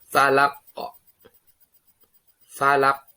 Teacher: Ini namanya qalqalah, harus mantul. Qalqalah kubra.